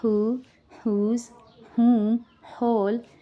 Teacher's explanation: letter W sound becomes silent and letter H sound will be given